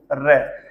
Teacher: र जो है उसके उच्चारण में पूरे के पूरे जो आपका मुख विवर है उसमें कंपन होता है, वाइब्रेशन होता है · और लुंठित का अर्थ होता है लुढ़कना। आपकी जो जिह्वा है एक टायर के रूप में, एक रोल के रूप में आपकी जिह्वा है वो लुढ़कती है जब आप किसका उच्चारण करते हैं, र का उच्चारण करते हैं। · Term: प्रकंपित व्यंजन